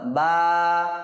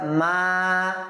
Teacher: কাড়া হারাকাতকে হরফে মাদ্দার মতো একালিফ টেনে পড়বো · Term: খাড়া জবর